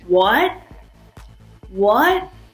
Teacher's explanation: The second tone is a rising tone. It's like when someone's asking a question.